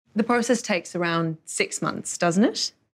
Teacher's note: we use a rising intonation at the end of the question tag